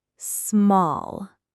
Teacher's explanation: The L sound is soft, almost silentish, like small.